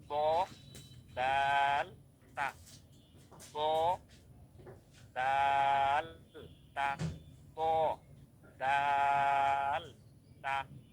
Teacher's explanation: জিহ্বার আগা সামনের উপরের দুই দাঁতের গোড়ার সঙ্গে লাগিয়ে ব, দাল, তা, এই 3টা হরফ।